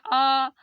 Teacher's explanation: जब बड़ा आ बोलते हैं तो पूरा मुंह खुलता है